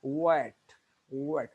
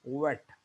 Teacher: जब आपने डब्ल्यू वाला वाह बोलना है तो आपके लिप्स आगे की तरफ जाएंगे और राउंड होंगे। ये थोड़ा सा वेट, वेट, लिप्स को आगे की तरफ निकालें और राउंड करें, वेट।